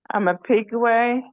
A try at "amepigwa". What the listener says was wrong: Amepigwa. Amepigwa, not ama. Ame.